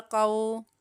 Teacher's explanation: کاف لام زبر کل، توئینا کل، یہاں پر یہ دیکھیں یہ بھی کاف باریک ہے، اس کے اوپر زبر ہے اور آگے واو ساکن ہے۔ کاف کی زبر کو واو کی طرف مائل کرتے ہوئے پڑھیں گے، اور یہاں پر واو لین کا قاعدہ ہو رہا ہے، اس کو بھی بغیر کھینچے پڑھیں گے۔